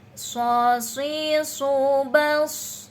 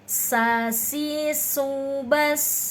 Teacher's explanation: Kalau sod itu mencucu selalu, kalau sin itu senyum selalu.